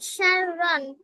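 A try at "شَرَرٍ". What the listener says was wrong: সার রন না, সিন র জবর সার, রয়া দুই জবর, কি হয়? সার রই।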